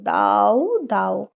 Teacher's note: দুটি স্বরধ্বনি একসঙ্গে উচ্চারিত হচ্ছে একটি খন্ডস্বর ধ্বনি এবং একটি পূর্ণস্বর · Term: যুগ্মস্বর